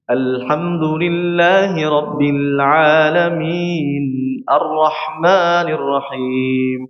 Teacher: Ini setengah mengalir pada huruf lam. Huruf lam itu rapat di sininya ya. Rapat pada makhrajnya. Namun dia bocor pada area sisi kanan dan kirinya. Ini membuat huruf lam itu harus harus dibaca dengan sedikit mengalir.